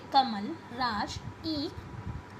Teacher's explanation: शब्दों के अंत में अ ध्वनि का उच्चारण नहीं करने की स्थिति अंत्य आलोप है।